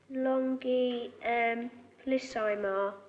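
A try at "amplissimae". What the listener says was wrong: Amplissimar, Latimer. Emar, not Imar.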